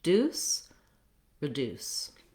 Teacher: making sure you have a tense oo